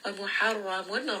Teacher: ra is going to be heavy because it has a fatha